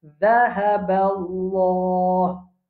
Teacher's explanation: Après, il y a Allah. Avant Allah, il y a Fatha, la bouche pleine.